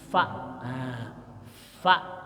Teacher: FA bibir bawah menyentuh gigi atas mengeluarkan angin